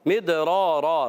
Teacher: دال ساکن ہے، قلقلہ ہوگا، آواز لوٹ کر آئے گی، حرف قلقلہ 5 ہے، قاف، طا، با، جیم، دال، تو یہاں قلقلہ ہوگا، مدرارا، را الف زبر را، را پر رہے گا، اور اس کے بعد 2 زبر کے تنوین کو الف سے بدلیں گے، یہ قاعدہ ہو جائے گا واو بالابدال مال الف۔